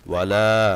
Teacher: ওয়ালা লামে তিন আলিফ টান